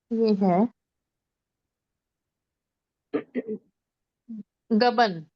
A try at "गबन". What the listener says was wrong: नो नो, गबन नहीं बोलेंगे, गबन। हल्की सी थ्रोट से साउंड आएगी, हाँ की, गबन। गबन। ठीक है, मतलब प्रॉपरली जी नहीं है वो, प्रॉपर ग नहीं है, गमले वाला ग नहीं है, थोड़ा सा हा की साउंड मिक्स है, गबन।